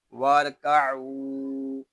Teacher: وَارْکَعُوا، یہاں الف زائد ہے، واؤ کو را کے ساتھ ملا دیں گے، عین کو ایک الف تک کھینچ کر پڑھیں گے، کیونکہ یہاں واؤ مدہ ہو رہا ہے۔ آگے جو الف ہے یہ زائد ہے، اس الف کو نہیں پڑھیں گے۔